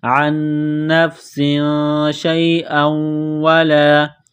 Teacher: سین کو باریک کرنا ہے، سیٹی کی آواز پیدا کرنی ہے، تنوین کے بعد شین ہے، حروف اخفا ہے تو تنوین پر غنہ کریں گے